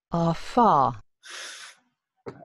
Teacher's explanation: la típica fricativa cuando uno sopla las velas de la torta del cumpleaños